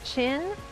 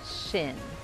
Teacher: la lengua más hacia atrás